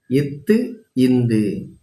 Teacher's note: நாவின் நுனி மேல்வாய்ப்பல்லின் அடியில் பொருந்துவதால் பெறக்கூடிய எழுத்துக்கள்.